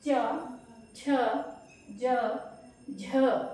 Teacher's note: जो जीव है उसका बीच का हिस्सा ऊपर जाकर आपके तालु को टच करता है